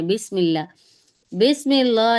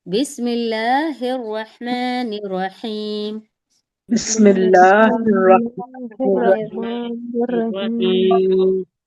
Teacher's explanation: एक तो क्या आप बिस्मिल्लाह पढ़ें तो उसमें लाम को बिल्कुल हमें लफ्ज़ अल्लाह को बिल्कुल मोटा, उसके लाम को मोटा नहीं पढ़ना है।